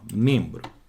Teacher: Aquele M tá nasalizando o som daquele E.